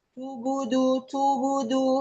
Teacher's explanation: Bunyi qalqalah terbawa dengan harokat sebelumnya. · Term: lahan khofi